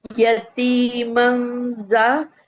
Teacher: या फतह, या नहीं सॉरी, या पे फतह एक हरकत पड़ी जाएगी जी, और ता के बाद या मद है, तो ये 1 काउंट नहीं 2 काउंट करेंगे इसे, यती। और मीम पे फतह तैन की तनवीन है, तो इसको जा से मिलाएंगे, इक्फा का कायदा होगा। और इक्फा के बाद ये जा को भी 2 काउंट पढ़ेंगे, यतीमन जा।